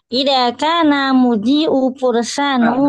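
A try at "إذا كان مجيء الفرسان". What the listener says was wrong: bukan mu ma masdar mimi jaa yaji'u.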